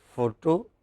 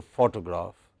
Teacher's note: Whether you say photo or you say photograph, it is stressed on the first syllable.